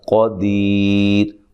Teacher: دی یا مدہ ہے، تو وقف کی صورت میں مد کر سکتے ہیں، اور وقف کی صورت میں را کو باریک پڑھیں گے، ملانے کی صورت میں را موٹی ہوگی، کیونکہ جب ملائیں گے تو یہ را کے اوپر پیشے ہیں، تو را کو موٹا پڑھیں گے۔